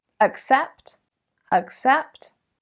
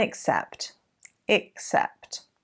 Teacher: with accept the a is actually an uh schwa sound and except is more of an e sound